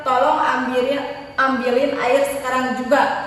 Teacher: itu harus ada penekanan di akhir kalimat harus nada tinggi